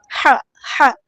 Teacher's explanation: ہا کو مستحلق یعنی مڈل تھروٹ سے ادا کریں گے